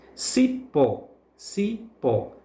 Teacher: Pó, portanto, é a sílaba tônica, a sílaba que é pronunciada com mais força, com mais intensidade.